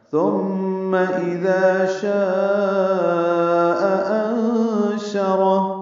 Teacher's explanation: شاء میں الف مدہ کے بعد حمزہ آنے کی وجہ سے مد متصل ہے، لمبا کریں گے ، ہم اسے 4 حرکات سے زیادہ لمبا کریں گے، انشرہ · انشرہ میں نون ساکن کے بعد شین آنے کی وجہ سے اخفا ہوگا